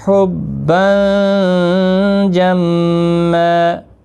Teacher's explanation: 1 زبر کے ساتھ وقف کریں گے، الف مدہ بنے گا، 1 الف کی مقدار کے برابر کھینچ کر وقف کریں گے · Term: وقف بالابدال